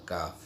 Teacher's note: কাফের মাখরাজ হলো জিহ্বার গোড়া থেকে একটু আগে বাড়িয়ে তার বরাবর উপরে তালুর সঙ্গে লাগিয়ে মধ্যখান পেঁচানো কাফ, এই হরফটি উচ্চারিত হয়।